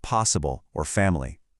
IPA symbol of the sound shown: ə